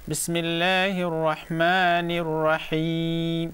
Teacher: The ha will be the stress on the middle part of the throat.